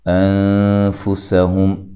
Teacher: سین کو باریک سیٹی سے ادا کرنا ہے۔ یہاں نون ساکن کا اخفا ہو رہا ہے، اخفا مع الغنہ، غنے کے ساتھ، اور باریک اخفا کریں گے، ٹھیک ہے۔